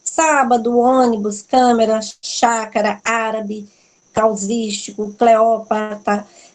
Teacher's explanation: todas as palavras proparoxítonas Ou seja que é a antepenúltima sílaba é a sílaba forte elas são acentuadas não tem erro sábado o ônibus câmeras Chácara